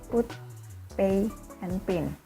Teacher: The P sound is called voiceless bilabial stop